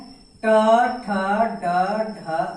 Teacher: ट, ठ, ड, ढ मूर्धन्य, इनका उच्चारण स्थान मूर्धा हो गया और इन्हें कठोर व्यंजन भी कहा जाता है।